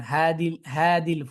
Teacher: উচ্চারণটা দ্রুত করার জন্য এবং সহজে করার জন্য তারা কি করে দদের পরবর্তীতে যে হারফটা লাইট লেটার ওকেও হেভি করে ফেলে · দদের পরবর্তীতে যেই হারফটা লাইট লেটার ওকেও হেভি করে ফেলে। অ্যা এভাবে করে যেমন হাদিল ফুদল, ঠিক আছে? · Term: আসরুল ইতবাক